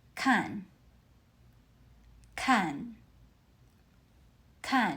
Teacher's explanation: Kan uses the fourth tone. Start high and drop sharply.